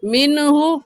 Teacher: نون ساکن کے بعد حروف ہلکی میں سے ہا آ گیا ہے، اس وجہ سے اس نون ساکن پر ہم غنہ نہیں کریں گے بلکہ جلدی سے پڑھ جائیں گے.